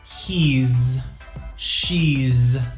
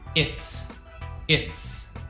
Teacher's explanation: these are z sounds but it's is an s sound